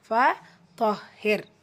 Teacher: அந்த ரா சுக்கூனை மெல்லினமாக தான் ப்ரொனவுன்ஸ் பண்ணுறோம்.